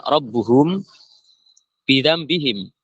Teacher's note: mim langsung menuju ke ba yang kemudian disamarkan mimnya ke ba tapi masih ada suara gunahnya · mim sama ba itu makhrajul hurufnya itu makhrajnya itu juga sama-sama dari asyafatain, dari 2 bibir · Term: Ikfa Syafawi, ikhfa syafawi